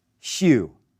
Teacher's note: do you hear the soft hissy sound at least when i say the h and the u sounds together